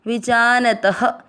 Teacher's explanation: त में की मात्रा तो विसर्ग को पढ़ेंगे ह